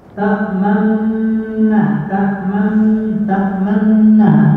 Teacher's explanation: memajukan bibir itu, memberi isyarat dengan bibir, itu bersamaan dengan hunna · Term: ma'al hunna